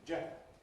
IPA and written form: ˈʤenrəl (general)